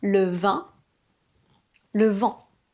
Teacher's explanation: contrairement à une voyelle classique, l'air doit sortir par le nez. Le "in" et le "en", souvent, vous avez tendance à les prononcer comme des voyelles classiques, évidemment, puisque peut-être elles n'existent pas dans votre langue. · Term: voyelles nasales